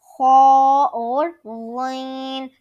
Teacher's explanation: ہم نے خا کو ایک الف کے برابر کھینچنا ہے اور غین کو 3 الف کے برابر، اور ان کو جو ہے ہم نے حلق کے سب سے اوپر والے حصے سے ادا کرنا ہے